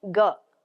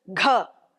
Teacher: It's a soft sound and the one after that comes as gha. So, same sound but it comes with a force of air